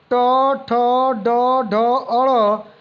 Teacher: मूर्धन्य उच्चारित व्यंजन है